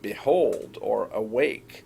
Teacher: a consistent pattern of less stressed followed by more stressed